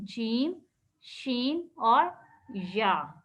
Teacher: ज़बान का जब दरमियानी हिस्सा अपने मुकाबिल ऊपर के तालु से लगेगा तो यहाँ से 3 हरूफ अदा होंगे। नंबर 1 जीम, नंबर 2 शीन और नंबर 3 या, ठीक है। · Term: हरूफे शजरिया